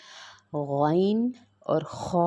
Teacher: یعنی حلق کا جو پہلا حصہ ہے، جو حلق کا وہ حصہ جو منہ کی طرف ہوتا ہے، اس سے یہ 2 حروف ادا ہوتے ہیں۔ مطلب حلق کا جو حصہ جو منہ کے قریب ہے وہاں سے ہم نے غین اور خا ادا کرنا ہے